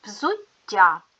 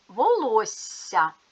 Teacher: М'який приголосний звук вимовляється довше ніж інші звуки такий звук називають подовженим щоб позначити м'який подовжений звук в слові пишуть дві однакові букви